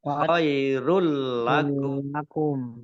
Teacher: Idgham bila gunnah masuk dengan tidak mendengung. Masuk ke huruf lam ditandai lamnya ada tasdidnya.